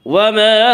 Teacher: انہ لقول فصل وما هو بالحزل، وما الف مدہ، الف ہمیشہ مدہ ہوتا ہے، الف سے پہلے ہمیشہ زبر ہوتا ہے، الف مدہ کو ایک الف کے برابر کھینچ کر پڑھیں گے